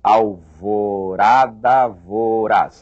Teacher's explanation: Note que o R de alvorada e o R de voraz, esse R não é o forte